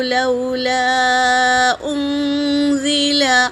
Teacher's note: الف مدہ ہے، اور اس پر مد ہے، مد منفصل، تو 3 سے 4 الف کے مقدار کھینچیں گے۔ حمزہ حرکت ہے، نون پر سکون ہے، اور نون ساکن کے بعد زا آیا ہے تو نون کا اخفا ہوگا۔